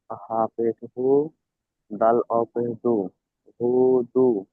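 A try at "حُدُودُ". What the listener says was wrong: হু টান হবে না, হুদু।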